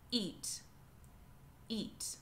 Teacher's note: I'm starting with a glottal stop, eat, eat.